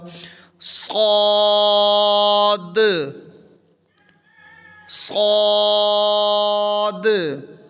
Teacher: آخر پہ د کی آواز بھی نکالنی ہے، کلکلا ہو